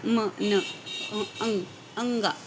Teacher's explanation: Nasal sounds, there is a complete closure in the mouth. The soft plate is lowered. Soft plate को lowered किया जाता है, complete closure, इसको नीचे लाया जाता है soft plate को।